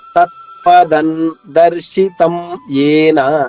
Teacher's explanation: తత్పదన్ ఇక్కడ నా రావాలమ్మా, సున్నా బదులు.